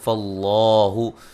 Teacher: لفظ اللہ کو خوب موٹا ادا کریں گے